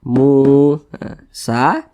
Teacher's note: namanya Mad Thobi'i panjangnya dua harakat atau kira-kira dua ketukan